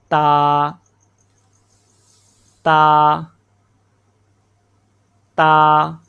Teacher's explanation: زبان کی نوک جب اوپر سامنے والے دو دانتوں کی جڑ سے لگے تو اس سے تا ادا ہوتا ہے